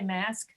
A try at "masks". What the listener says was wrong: as long as you can say that final SK, you add an S to it.